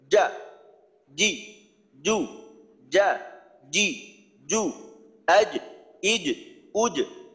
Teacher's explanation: জিহ্বার মধ্যখান উপরের তালুর সাথে শক্তভাবে চাপ দিয়ে ধরলাম। জিহ্বার মধ্যখান প্রত্যেকেই একটু ট্রাই করেন, আমি যখন বলতেছি যে জিহ্বার মধ্যখান উপরের তালুর সাথে শক্তভাবে চাপ দিয়ে ধরেন, ধরে রাখেন, তারপর খুবই দ্রুততার সাথে যা, এইভাবে একটু ট্রাই করে দেখতে পারেন। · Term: জিম